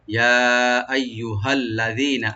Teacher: হাটাকে right দিবেন গলার শেষ থেকে